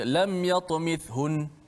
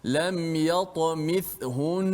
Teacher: Nun, sabdu, walaupun ketika wakaf tetap dibaca panjang dengung itu.